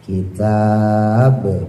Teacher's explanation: qalqalah kubra pantulannya penuh karena ada di belakang bacaan